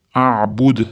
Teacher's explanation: A'bud da sukun bilan to'xtayotganimiz uchun qalqala berib to'xtaymiz